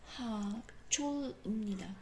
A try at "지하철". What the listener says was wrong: 제하철? I 사운드 지, 지